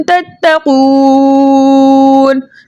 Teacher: ता पहली मरतबा ता से मिलकर पढ़ा जाएगा और दूसरी मरतबा अपनी हरकत के मुताबिक यानी जबर के साथ पढ़ा जाएगा। · वाव मद्दा को 2 हरकत की मिकदार खींचकर पढ़ते, लेकिन आगे नून का सकून आरिज़ी वक्फ की सूरत में आ रहा है, इसलिए यहाँ पर मद बनेगी मद्दे आरिज़ वक्फी, जिसकी मिकदार 2 4 6 हरकत है, लेकिन 6 हरकत की मिकदार खींचकर पढ़ना ज्यादा बेहतर है। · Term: ता मुशद्दद